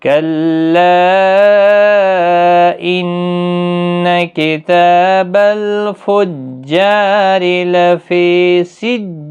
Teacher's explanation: رو زیر کی وجہ سے باریک ہوگا